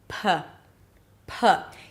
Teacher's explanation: The P sound is produced with the lips closing. The air pressure builds up and then you release the air with a puff. P, P. Here it's just the air that comes out through your mouth.